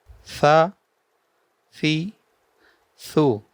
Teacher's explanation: بغیر سیٹی کے، زبان کی نوک اور اوپر کے دانتوں کے اندرونی کنارے سے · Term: ثا بغیر سیٹی کے